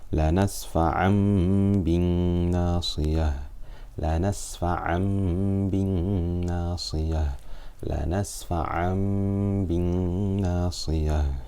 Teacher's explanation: So to recap, whenever we have noon sakina or tanween followed by a ba, then the noon sound of the noon sakina or tanween is changed into a meme, and we read it with غنة for 2 harakat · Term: Iqlab